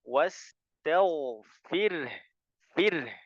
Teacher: Ya jadi jelas rnya jelas dan ingat rnya tarqik ya rnya tipis